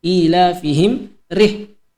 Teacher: mim mati bertemu dengan huruf ra, ya. Itu hukum bacanya izhar syafawi, tidak didengungkan melainkan dibaca jelas.